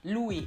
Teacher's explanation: you don't pronounce the S at the end because it's French, it's a silent S. So in most cases in French you don't pronounce the ending letter at all.